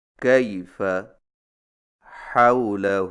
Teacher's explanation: حروف لین کی ادائیگی نرم اور لچکدار ہوتی ہے، جس میں معمولی سا کھچاؤ ہوتا ہے، لیکن حروف مدہ کی طرح آواز ڈھیلی اور لمبی نہیں ہوتی